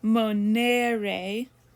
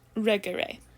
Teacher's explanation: the long e is only different in that it's held literally for a longer amount of time